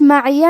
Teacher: میم پہ زبر ہے, عین کے نیچے زیر ہے اور یا پہ زبر ہے. ہم یہ تینوں حرکات کو برابر سے ادا کریں گے